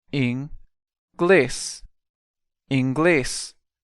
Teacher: Notice again the stress is on the last syllable.